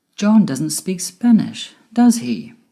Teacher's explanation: my voice went down at the end with does he because i'm sure he doesn't speak spanish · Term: falling intonation